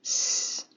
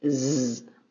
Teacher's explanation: Consonant S makes two sounds. Unvoiced, S, as in South Dakota, S. Voiced, Z, as in New Jersey, Z.